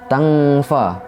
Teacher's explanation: fathah tanwin dibaca samar-samar dengan mendengung serta ditahan 3 harokat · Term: ikhfa hakiki